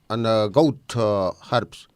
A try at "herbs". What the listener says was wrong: Goat herbs. In American English, we say herbs. La H es muda. And the British say herbs. Herbs. But you can't say herbs because you're putting an H and you're pronouncing the word in the American style.